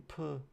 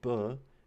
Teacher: The only difference between the two sounds is that in p, you have no vibrations, so this is what's called a voiceless sound, and in b, you have vibrations, so this is called a voice sound.